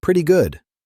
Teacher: The double T sounds like a fast D.